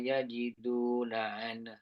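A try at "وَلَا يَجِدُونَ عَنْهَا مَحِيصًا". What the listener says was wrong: Cuma makhraj tu kena tebalkan lagi huruf yang tebal macam D sad Oke dia kurang tebal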